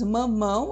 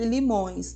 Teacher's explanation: observe a nasalização passando pelas vias nasais, e limões, novamente nasalizado. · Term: ditongos nasais